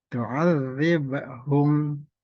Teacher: ada huruf ba, sukun dibaca qalqalah atau dipantulkan · mim mati bertemu fa, nah ini izhar dibaca jelas seperti biasa